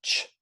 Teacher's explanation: so it is an unvocalized affricate